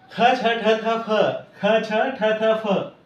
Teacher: ही महाप्राण आहेत याच्यामध्ये ह ची छटा असणारे आहेत